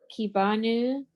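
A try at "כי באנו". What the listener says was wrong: That's a vet. It has a sound. Va.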